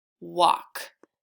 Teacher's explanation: there is no L sound in that word because the L is silent